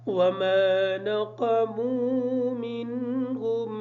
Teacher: وما نقموا کا جو قاف ہے اس قاف کو موٹا پڑھیں گے